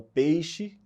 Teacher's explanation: a monotongação, como, por exemplo, peixe, né, que a gente fala o peixe, não pronuncia o i